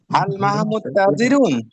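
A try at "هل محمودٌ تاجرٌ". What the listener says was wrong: হ্যাঁ, হাল মাহমুদুন, মাহমুদুন হবে। আমরা জানি যে পুরুষ নামের শেষে কি হয়? তানবিন হয়। হাল মাহমুদুন তাজিরুন। হ্যাঁ, অর্থ উত্তর হবে যে নাম, হ্যাঁ, মাহমুদুন তাজিরুন।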